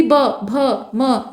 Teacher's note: बाकी जो मुंह का पार्ट है वो तो सपोर्ट करता ही है, लेकिन मुख्य भूमिका किसकी होती है ये बताया जा रहा है। तो ओष्ठ जो होते हैं उसमें मुख्य योगदान होठ का होता है। जो हवा है ना वो होठ से होकर बाहर आती है और उसी हिसाब से उच्चारित होता है।